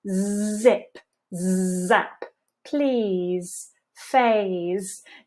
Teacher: make sure that you're touching your throat to check maximum vibration this is the same sound as an S but we're just adding vibration in The Voice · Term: voiced Buzzy Z, voiced, buzzy z, the voiced, buzzy z